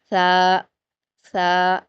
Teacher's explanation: सा अदा करते हुए भी आप अपनी जुबान की नोक को ऊपर के दो दांतों के किनारों से मिलाएंगे और थोड़ी सी जबान की नोक बाहर दिखाई देगी